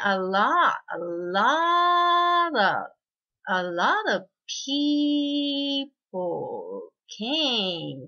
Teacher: 少し長めの一拍をとって、ストレスのないところは下がって、少し早いです